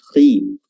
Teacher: huruf kha-nya tebal walaupun dia walaupun dia kasrah.